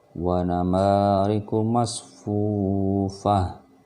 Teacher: Ketika dia berhenti, suaranya berubah menjadi ha, betulan ha besar.